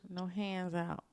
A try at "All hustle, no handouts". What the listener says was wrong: No hand outs. Take the S off. Hand outs. S on the outs.